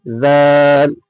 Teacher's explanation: দাল উচ্চারণ হয়ে থাকে জিভের আগা এবং সামনের ওপরের দুই মধ্যখানের দুই দাঁতের আগার সাথে লাগিয়ে